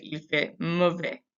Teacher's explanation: And then mauvais, again, we don't pronounce that consonant at the end. We don't pronounce the S. We just say il fait mauvais.